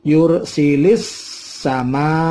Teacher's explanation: Itu dibaca tafkhim tebal, yursilis sama. Ini ada al-ta'rif ketemu dengan sin, namanya al-syamsiyah, maka yursilinya langsung sin masuk.